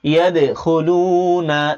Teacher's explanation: ইয়া দাল জবর ইয়াদে, দালে সাকিন কলকলা করতে হবে।